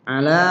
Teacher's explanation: Ala itu juga panjang. Panjangnya 2 ketukan mat tabi.